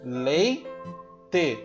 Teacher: Quando eu falo leite, E com I estão na mesma sílaba. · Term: ditongo